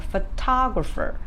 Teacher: for example photographer apart from the second syllable others are not stressed